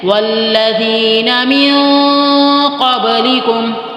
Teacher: ذال نرمی سے ہوگا، سیٹی نہیں آئے گی اس میں، والذین من قبلکم میم نون زیر من، آگے قاف ہے، نون ساکن کے بعد جب بھی قاف آ جائے تو وہاں پر تجوید کی زبان میں اخفا کیا جاتا ہے۔